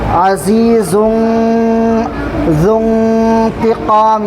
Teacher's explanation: वल्लाहु अज़ीज़ुन, यहाँ पर भी इख्फ़ा करेंगे, तनवीन के बाद हुरूफ इख्फ़ा का ज़ाल आ रहा है, इसलिए आवाज़ को नाक में छुपा कर पढ़ेंगे।